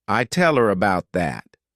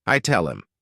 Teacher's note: when these words go unstressed, people tend to just omit the letter H and the sound that it corresponds to